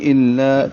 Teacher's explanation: الا کو لام کو 2 حرکات لمبا کریں گے اور لام باریک پڑھیں گے